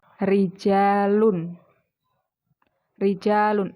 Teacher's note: ro yang berharakat kasrah di mana pun tempatnya itu dibaca tipis atau meringis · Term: targik, tarkik